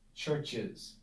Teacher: an s at the end was difficult to pronounce and so instead of just adding an s we add a syllable with a vowel churches that's much much easier much clearer much much more pleasant